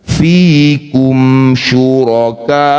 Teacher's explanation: Mad thai bertemu huruf hidup dan dihentikan jadilah bacaan mad arid bisukun. Ka panjangkan enam harakat. Hamzah sukunkan. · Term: mad arif disukun